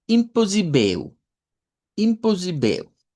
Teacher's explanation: esa doble s que al final de cuentas suena como una s, pero con la i acentuada ahí haríamos la fuerza